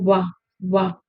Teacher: दंतोष्ठ्य में, दंतोष्ठ्य मैंने क्या बताया? नीचे का होठ, ऊपर का दांत